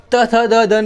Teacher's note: त थ द द न बोलेंगे तब हमारी जीवा दांत से टकराती है। इसी कारण इनका उच्चारण स्थान भी ये है।